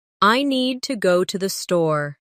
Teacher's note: Make need and store strong. And let to the be quick and light.